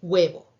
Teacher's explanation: originalmente el primer sonido es una vocal pero se refuerza y al final suena como guau · Los llamamos elementos vocálicos con fricción, que vamos a ver que son, por ejemplo, en la palabra huevo. Si originalmente el primer sonido es una vocal, pero se refuerza y al final suena como w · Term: deslizadas